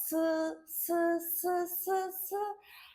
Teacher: 혀 끝과 앞니 사이에서 공기를 마찰시키면서 나는 소리야. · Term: 마찰음